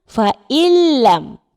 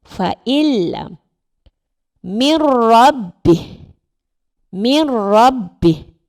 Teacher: Cara bacaannya menggabungkan bunyi nun dengan huruf selepasnya tanpa dengun. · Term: idgham bila gunnah